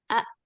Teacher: ketika Hamzah sukun itu ee diucapkan ketika diucapkan pita suaranya itu dia rapat